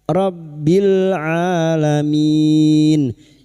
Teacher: lam takrif yang bertemu ain idhar qariyah rabbil alamin alamin huruf ain Alif kecil di atas dua harakat